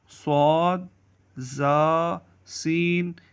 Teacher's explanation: صاد، زا، سین، ان کو حروف صفیریہ کہتے ہیں، یعنی سیٹی والے حروف۔ ان کی ادائیگی میں آواز سیٹی کی طرح نکلتی ہے۔ ان کا مخرج یہ ہے، زبان کی نوک اور دونوں دانتوں کے اندرونی کنارے سے ادا ہوتے ہیں۔